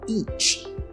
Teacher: esse ch tem um som de t aí no meio também, tá? Então a gente não vai falar, a gente fala each.